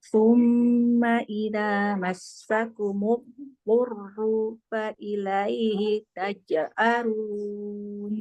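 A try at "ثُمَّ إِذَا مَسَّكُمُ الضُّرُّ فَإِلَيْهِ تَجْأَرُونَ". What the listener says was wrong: Nah, hurufnya jangan di ini. Jangan kayak ada jeda. Jadinya kayak panjang. Durru fa ilaihi. Massakumud durru fa ilaihi.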